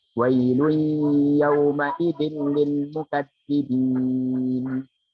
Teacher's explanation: Yauma idzin, di situ ada tanwin bertemu lam, hukumnya idgham bila gunnah dan enggak boleh didengungkan.